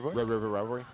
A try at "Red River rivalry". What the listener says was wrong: You got to say the L.